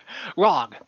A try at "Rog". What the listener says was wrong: No, no, Rog. No, not Grog. Rog. R-O-G. Just R-O-G.